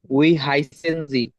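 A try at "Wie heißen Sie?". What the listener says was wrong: উই না, ভি, ভি, ভয় দীর্ঘিকারে ভি, ভয় দীর্ঘি ভ।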